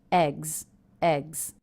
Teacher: Also, the plural ending here, S, is pronounced as a Z. That's because the sound before, the G sound, is a voiced consonant.